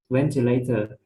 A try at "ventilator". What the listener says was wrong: Tốt. Vừa nãy cậu đọc nhầm là ventilation.